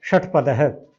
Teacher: ट, ट, ठ, ड, ढ बोल के देखिए। ट, ठ, ड, ढ, बिल्कुल ऊपर, जीभ ऊपर जाती है। वहां से जो श बोला जाएगा उसे कहेंगे मूर्धन्य श।